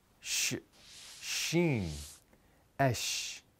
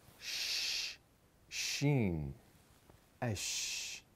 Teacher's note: Sheen is pronounced from the top and bottom front teeth, pressing against each other and then pushing air out. You know, like when you want to hush someone.